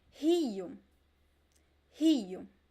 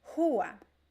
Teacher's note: So it can be a little bit softer or stronger, but the sound always comes from the throat. Okay, there's a lot of air passing through the throat.